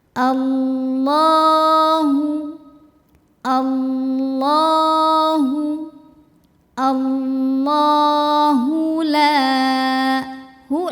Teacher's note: h-nya ini ha gede keluarnya dari tenggorokan bawah bawaannya lebih berat